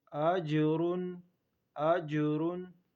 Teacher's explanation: حمزہ جیم زبر اج، راد پیش رن، اجرن، را کو پر پڑھیں گے اور جیم پر قلقلہ کریں گے